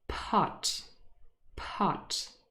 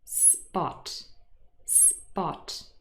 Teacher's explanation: it's a difference there's no aspiration in spot · the first one we would say is aspirated, and the second one is unaspirated